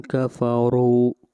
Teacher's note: اس را کو موٹا پڑھیں گے اور را کے اوپر پیش ہے